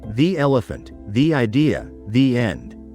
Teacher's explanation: It sounds like the, with a long E sound, like in sea or tree.